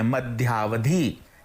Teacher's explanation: इसमें अ धन अ इस वर्ण की ध्वनि सुनाई दे रही है और दोनों मिलकर आ बन जाते हैं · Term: दीर्घ स्वर संधि